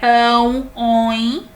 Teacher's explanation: Nós temos aí a nasalizada por causa do tio, né, fica ão e oin. Quando você pronuncia esses ditongos, o som se recai sobre o nariz, né? Ão, oin. Pode perceber que fica nasalizada a pronúncia.